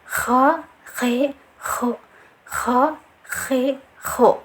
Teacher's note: mempunyai sifat hamas juga, kho, jadi ada angin yang mengalir ya